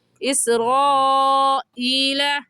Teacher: یہاں پر حروف مدہ کے بعد حمزہ اسی کلمے میں ہے، تو اس مد کا نام ہوگا مد متصل اور مد واجب، اور اس مد کو 4 الف کے برابر کھینچیں گے، اس سے کم یا زیادہ نہیں کھینچیں گے۔ ایسے کہیں گے اسرائیل۔